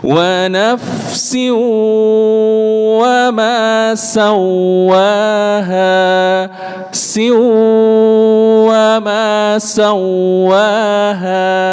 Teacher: Yang betul idgham bi gunnah harus lebih lama menahannya.